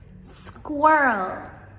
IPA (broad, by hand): ˈskwɜːrəl